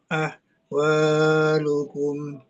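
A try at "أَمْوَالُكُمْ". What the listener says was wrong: Amwa bukan ahwa tapi amwa. Ulangi.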